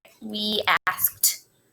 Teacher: the ed at the end is going to sound like t. Again, still need to write the ed, but it's going to sound like a t. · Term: t sound